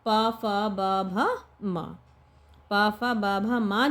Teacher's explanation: आपस में जो होठ है ना हमारे, वो मिल जाने चाहिए, तो हम उनको ओष्ठ कहते हैं।